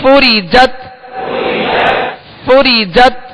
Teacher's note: فا کو اس کے مخرج سے ادا کیجئے اوپر کے سامنے والے دو دانت کے کنارے اور نچلے ہونٹ کا تر حصہ اندر والا حصہ ہوتا ہے فوری جت فوری جت نون پیش